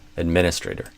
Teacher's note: I'd do administrator with the primary stress on the min. There might be variation on that, but that's what I'd recommend.